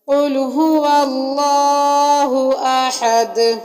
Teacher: تجوید کے لحاظ سے لفظ اللہ کے پیچھے والے حرف پر جب زبر آ جائے تو لفظ اللہ کو موٹا پڑھا جاتا ہے، اور آخر میں احد، احد میں دال پر قلقلہ ہوگا۔